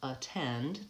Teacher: because it's the only syllable the stressed syllable in the word versus attend it becomes a schwa